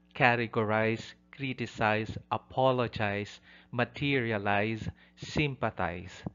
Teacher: The last syllable, specifically the IZE ending, does not receive the primary stress.